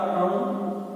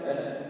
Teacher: अंग का उच्चारण स्थान क्या है, नासिका, और अह का उच्चारण स्थान क्या है, कंठे